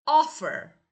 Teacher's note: Offer is a verb but the first syllable is stress.